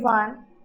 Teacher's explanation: if we hear the sound of this word, it seems like it is starting with W.